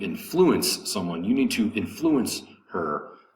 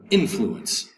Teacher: The second syllable has the accent. To influence someone, you need to influence her, versus to have influence, a noun, influence, accent over the first syllable